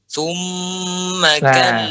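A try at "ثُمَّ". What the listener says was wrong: Ya, tadi tidak panjang. Di situ tadi tidak terlalu panjang gunnahnya.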